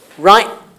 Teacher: If the vowel is shorter, you're saying right because the T is not pronounced as a T, but it's got a glossal stop, basically.